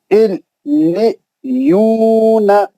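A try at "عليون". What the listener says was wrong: لی نہیں لی، یا سے ملانا ہے. یا کا آواز کیسا رہتا؟ الی یون.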